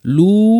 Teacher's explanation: লাম পেশ ওয়াও সাকিন টানতে হবে। লু এক আলিফ, বেশি না। লু, তারপরে উ, দুইটা আলাদা ওয়াও।